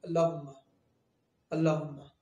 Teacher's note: اللہ کے نام سے پہلے زبر یا پیش آ جائے تو اللہ کا نام پور پڑھیں گے، موٹا پڑھیں گے۔